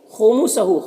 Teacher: کھڑا زبر ہے، یہ الف مدہ کی طرح ہوتا ہے تو اسے 1 الف کے برابر کھینچیں گے۔ خمسہ، خا حروف مستعلیہ میں سے پر پڑھیں گے، اور ہا کے اوپر الٹا پیش ہے، یہ واو مدہ کی طرح ہوتا ہے، اسے 1 الف کے برابر کھینچ کر پڑھیں گے۔